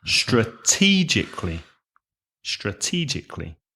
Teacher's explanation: four syllables and the stress is on the second syllable